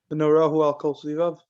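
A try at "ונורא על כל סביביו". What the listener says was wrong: There's no who. V'nora al kol svivav.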